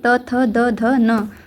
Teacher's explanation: त थ द ध न तो इनका उच्चारण स्थान आपका हो जाएगा दंत